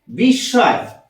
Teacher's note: উচ্চারণ করছি দৃত্ত উচ্চারণ দৃত্ত দন্তস এর সাথে ম যুক্ত আছে আমরা ম উচ্চারণ না করে এই দন্তসের দুবার উচ্চারণ করছি · যে বর্ণের সাথে ম যুক্ত আছে সেই বর্ণটাকে আমরা দুবার উচ্চারণ করছি